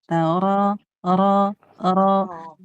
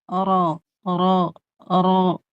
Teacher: dia dibacanya tebal ujung lidah ke gusi belakang ro dan pangkal lidahnya naik